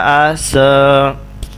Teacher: عین زبر سین اس، یہ عین حروف حلقی میں سے ہے. عین کو وسط حلق سے ادا کرنا ہے اور سین کے اوپر سیٹی کی آواز آئے گی. یہ حروف صفیریہ میں سے سین ہے.